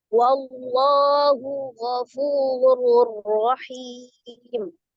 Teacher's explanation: Dan ketika waqaf maka dia disukunkan ya. Jadi mad yang bertemu dengan satu huruf yang disukunkan karena waqaf maka menjadi mad arid lisukun. Panjangnya 2 atau 6 dibaca istiqomah atau konsisten ya.